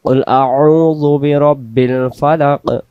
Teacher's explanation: টাকে খুবই গুরুত্ব দিব যেন এটা কাপে না যায় কব অক্ষর জিহ্বার গোড়া থেকে মোটা করে পড়তে হবে